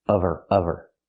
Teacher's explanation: Now we need the v sound in of because we don't pronounce the h in her. We link the sounds.